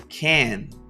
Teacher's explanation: Y noten cómo hay una oclusión glotal de la T.